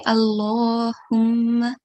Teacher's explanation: Just remember to prolong the vertical fatha for 2 seconds.